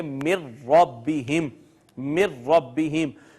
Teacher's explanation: نون اور را دونوں قریب المخرج ہیں، دونوں قریب قریب سے ادا ہوتے ہیں، دو اکٹھے قریب المخرج حروف آئے، پہلا ساکن ہے دوسرا متحرک ہے، تو پہلے کو دوسرے میں ضم کر دیا، اور اس کو پڑھیں گے من ربہم، من ربہم۔ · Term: ادغام متقاربین